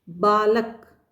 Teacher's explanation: इसमें बा के ऊपर जितना हमने जोर दिया उतना ल और क पर नहीं दिया, इसलिए यहाँ पर बलाघात है, बलात्मक जो स्वराघात है वो ब के ऊपर आया है।